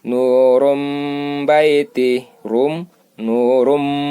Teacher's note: Mim ba'd. Nun sukun atau tanwin berubah menjadi m.